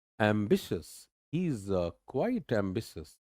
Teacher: तो एम पे जोर कम, बिस पे ज्यादा. और BCS नहीं है ये, EOUS, that इज एम्बिशियस, एम्बिशियस.